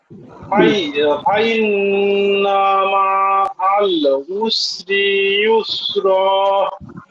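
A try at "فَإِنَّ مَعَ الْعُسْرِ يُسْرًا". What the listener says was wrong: হরকতের দিকে একটু খেয়াল রেখে, হরকতে মনে হয় একটু টান টান হয়ে যায়। আবার হরকতের দিকে একটু খেয়াল রেখে হরকত উচ্চারণ তাড়াতাড়ি হবে।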